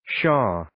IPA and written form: ʃɔː (Shaw)